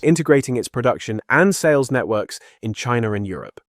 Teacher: complete with Southern British intrusive R and very audible inhalations between phrases